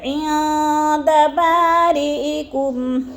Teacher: نون ساکن کے بعد دال آ گیا تو ادھر اخفا ہے، آواز کو ناک میں چھپا کر پڑھیں گے